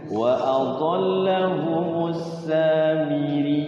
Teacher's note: Bukan panjang tapi dia ditekan karena double. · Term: tasdid